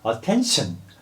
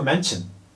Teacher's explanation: 여기서 코에서 이제 바람이 나간단 말이에요. 그런데 그 중에서도 N 다음에 tion, sion, 션 소리가 나는 게 붙어버리면 이게 그 비음 때문에 소리가 시 발음이 안 나고 치 발음이 돼버려요.